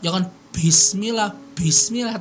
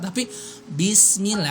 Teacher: kalau ngomong kita mengucapkan huruf ba itu temen-temen jangan sampai keluar nafas jangan bismillah bismillah tapi bismillah karena sifatnya dia memang nggak keluar